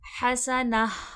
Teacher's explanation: تا کے وقف میں ہمیشہ ہا کی آواز آتی ہے، یہ ہائے مدورہ کہلاتا ہے۔